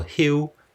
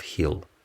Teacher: The alveolar lateral L is pronounced as U or W in final position or in a final consonant cluster. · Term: L vocalization